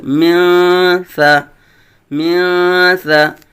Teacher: حروف اخفاء میں سے ثا آیا ہے، اخفاء کا قاعدہ ہوگا، نون کو چھپائیں گے یعنی غنہ کریں گے